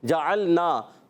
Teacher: عین کو لام سے ملانا ہے، لام کو ہلانا نہیں. عین کی ادائیگی حلق کے درمیان والے حصے سے